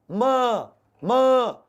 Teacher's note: मुंह और नाक दोनों से हवा निकले, वायु बाहर आए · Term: अनुनासिक वर्ण